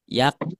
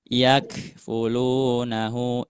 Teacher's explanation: Pengucapan huruf kafnya jangan sampai dipantulkan tapi dialirkan, tidak juga ditahan.